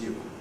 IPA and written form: ju (you)